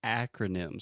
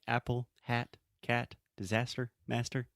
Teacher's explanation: the first sound is that really open a sound that we have in English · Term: really open ah sound